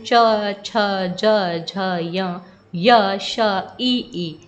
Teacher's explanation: इन वर्णों को बोलते समय जो जिह्वा है वो तालु को स्पर्श करती है